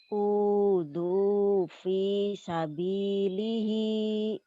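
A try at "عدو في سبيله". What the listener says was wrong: udhu fi sabilihi bukan nggak ada hi-nya udhu fi sabili ya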